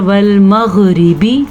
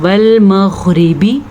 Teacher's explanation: یہاں پہ غین پہ تو کلکلا کسی صورت میں نہیں بنتا، کیونکہ غین جو ہے وہ حروف کلکلا میں سے نہیں ہے لیکن حروف مستعلیہ میں سے ہے۔